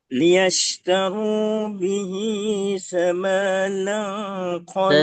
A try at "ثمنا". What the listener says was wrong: thamanan, ma-nya tidak panjang.